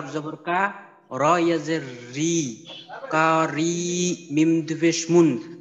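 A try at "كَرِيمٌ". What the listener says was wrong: আচ্ছা, কাফ কিন্তু একটু লম্বা হয়ে গেল, কা একটু লম্বা হয়ে গেল, কা যেন লম্বা না হয়। কারিমুন।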